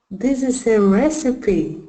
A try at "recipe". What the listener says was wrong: Not receipt. Recipe.